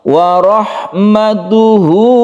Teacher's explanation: karena diapit oleh dua huruf hidup, dia dibaca panjang satu alif, ditandai dengan dhammah terbalik ini. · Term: mad silah qasirah